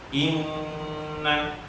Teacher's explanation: Jadi sebagian masuk ke mulut, sebagian lagi ke jalur hidung.